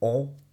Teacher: es como una O con la nariz taponada, ON. Este funciona muy bien si tenéis catarro. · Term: Le son ON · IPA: [ɔ᷈]